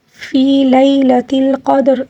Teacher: فی جو ہے یہاں پر یا مدہ ہے، اس کو تقریباً 1 الف کے برابر کھینچ لیں گے